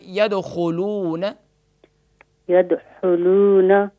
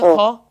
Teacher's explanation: یہاں خا ہے، خا گلے کے اوپر والے حروف حلقیہ میں سے ہے اور یہ ٹاپ آف تھروٹ یعنی ادنی حلق گلے کے اوپر والے حصے سے ادا ہوگا